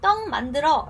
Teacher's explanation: 뒤에 있는 미음의 영향을 받아서 어떻게 된다? 이응으로 변한다. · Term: 비음화